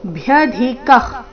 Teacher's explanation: ಭ್ಯ ಧಿ ಮಹಾಪ್ರಾಣ ರಸ್ವ, ನಂತರ ಅಲ್ಪ ಪ್ರಾಣ ಕ ಇದೆ. · ಭ್ಯ ಧಿ ಮಹಾಪ್ರಾಣ ರಸ್ವ ನಂತರ ಅಲ್ಪಪ್ರಾಣ ಕೆ ಭ್ಯಧಿಕ ವಿಸರ್ಗ ಅರ್ಧ ಕರೀತಿ ಭ್ಯದಿಕ ಕುತೋನ್ಯೋ ಕುತೋನ್ಯೋ ತೋ ದೀರ್ಘ ಕೊನೆಗೆ ಯೋ